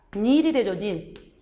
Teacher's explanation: 꼭 니은 첨가 있으면. 그러면 뒤에 있는 니은으로 인해서 앞에 있는 파열음이 다시 비음화. 이게 역행동화라고 했죠.